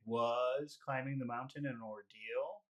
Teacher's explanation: And suddenly you want to make the word was, you want to make that an important word. So it suddenly becomes big.